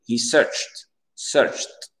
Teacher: Le CH. Les amis, lorsque vous avez un verbe qui finit par CH et vous avez le ED devient T